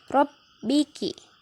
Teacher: Jadi ditahan dulu di huruf ba-nya, ada tasdid di atasnya.